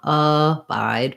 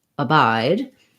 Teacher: our letter a is going to be just a reduced schwa that sounds like uh so it's going to be very fast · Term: second syllable stress